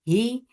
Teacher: He focus give E sound. And ha is from last part of your throat. And it should be from your throat nicely.